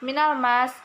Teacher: alif lam qamariyah karena huruf alif lam bertemu dengan mim dan dibaca dengan jelas